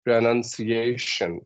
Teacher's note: The ciation has a bit longer, higher, stronger sound. So stress will fall on this particular syllable, ca, ciation, right?